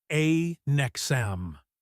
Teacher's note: The n sound slides right into the e. It sounds almost like the word next but without the t.